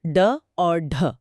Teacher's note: बोलते वक्त जीभ झटके से नीचे गिरती है। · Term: उत्क्षिप्त